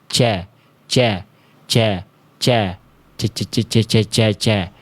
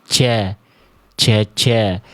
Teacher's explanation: Jadi, nafas huruf jim itu tertahan. Enggak boleh keluar. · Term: jahr